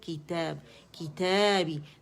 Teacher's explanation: تا ہے اس کا یہ الف صغیرہ، تا کی آواز کو 2 کاؤنٹ کے لیے کھینچ رہا ہے. مد اصلی ہے، مد طبیعی بھی کہتے ہیں اسے، مد اصلی بھی کہتے ہیں.